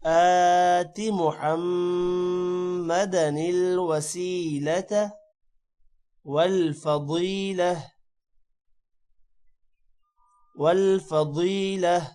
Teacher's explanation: ضاد موٹا ہوگا اور ضاد کے بعد یا ہے، تھوڑا سا لمبا کریں گے